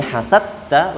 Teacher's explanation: Dal masuk ke huruf ta sehingga qalqalahnya hilang, dalnya hilang. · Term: idgham mutajanisain